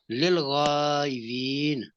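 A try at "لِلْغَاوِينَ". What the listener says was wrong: नहीं, लिलगावीन, है, वाव है, वाव वाव, वीन।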